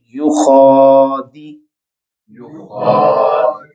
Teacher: خا کے اوپر کھڑی زبر آ رہی ہے، تو ہم اس کو لمبا کر کے پڑھیں گے